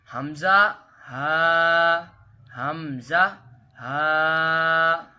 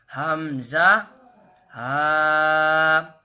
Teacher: ये अदा होते हैं हलक के नीचे वाले हिस्से से